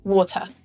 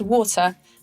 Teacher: In UK English, it's pronounced water and not water, like in the US. The first syllable is stressed, and so the second syllable becomes weak, just like a schwa